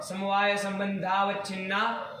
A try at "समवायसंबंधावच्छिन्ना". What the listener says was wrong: अवच्छिन्ना बोल दिए बाबू, तोड़ दिए तुमने। हम तोड़ते नहीं है, वो वैयाकरणों का काम है सब तोड़ थोड़ करके बोलना, है कि नहीं है। हमारा है कि पूरा चलो फिर अंतिम में जाकर के साली ज्ञानम, यहाँ एक पद बनना चाहिए, उसके पहले कोई तोड़ना नहीं, पूरा समस्त जाना है।